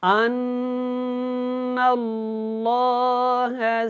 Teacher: اللہ والا لام سے پہلے زبر ہے، اس کو موٹا پڑھیں